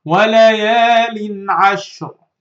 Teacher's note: Don't make nasal sound. Say it without any nasal sound. Say it without غنة, without hiding, without merging. Make it clear.